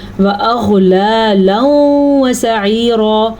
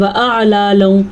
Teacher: غین کا جو مخرج ہے اس کو ادا کرتے ہوئے پر بھی کریں گے. بعض لوگ پڑھتے ہیں وَأَعْلَالًا، یہ عین نہیں ہے، یہ غین ہے، تو آپ نے غین کو غین ہی پڑھنا ہے اور عین کو عین پڑھنا ہے.